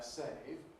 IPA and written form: seɪv (save)